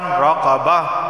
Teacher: گول تا وقف کی صورت میں ہا کی آواز آ رہی ہے